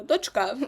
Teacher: дочка наголос на останньому складі на другому